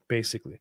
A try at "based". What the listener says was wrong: The word isn't basically, it's based. I know you're foreign. I know you're foreign, but it's pronounced based.